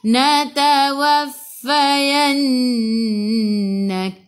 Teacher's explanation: Kaf sifat hurufnya hamas, kena ada sedikit sahaja angin, jangan banyak.